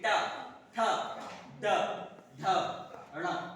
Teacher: वो बोल के देखिए, ट, जीभ पीछे की तरफ उठती है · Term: मूर्धन्य